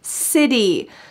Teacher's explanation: this word has a t change to a d